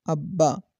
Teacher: با پر قلقلہ نہیں ہوگا کیونکہ دونوں حروف کو مشدد کی حیثیت سے ملایا ہے